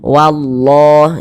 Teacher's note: Jadi huruf lam yang di tengah nih, huruf lam jalalah. Nah ini kita tebalkan, kita baca tafkhim, sehingga kita baca wallah